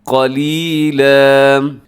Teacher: قلیلا دو زبر کو وقف میں الف مدہ کی طرح کھینچ کے پڑھتے ہیں، وقف کریں گے تو ہوگا قلیلا۔